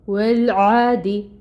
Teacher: عین کے اوپر آپ کو کھڑی مد نظر آ رہی ہے جس کو 2 حرکت لمبا پڑھیں گے، 2 کاؤنٹس، اور اس کو ادا کریں گے ہم وسط حلق سے۔ دال کو باریکی سے ادا کریں گے، مرقق ہے، اور 1 کاؤنٹ اس کی حرکت ہوگی جو کسرہ کی حرکت ہے۔